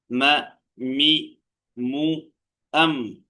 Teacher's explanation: രണ്ട് ചുണ്ടുകൾ എന്ന ആ മഹ്റജിൽ നിന്നും നാല് അക്ഷരങ്ങളാണ് വരുന്നത് ഒന്ന് മീം മീം എന്നുള്ള അക്ഷരം രണ്ട് ചുണ്ടുകളുടെ ഇടയിൽ നിന്നാണ് വരുന്നത്